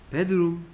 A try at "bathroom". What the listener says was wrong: 이라고 발음 안 돼, 하면 안 돼. TH는 선생님이 소리 어떻게 소리 내라 그랬어? 혀를 살짝 물고 뭐 아니면 뭐 the 아니면 쓰라 그랬지. 그래서 욕실은 bathroom이야, bathroom. TH 써 bathroom이야, bathroom.